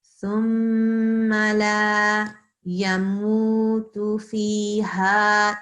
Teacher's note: So you don't keep it short. I know there's a fatha on top of the lam, but there's an alif after it. So we don't ignore the alif. We have to then elongate the sound.